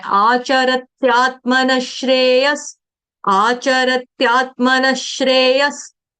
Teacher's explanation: आचरत्यात् मतलब त का आघात, आधे आधे दो त ले रही हूं मैं